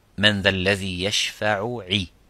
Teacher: I made the idgham as I made the two letters as one letter. That's called idgham mithlain.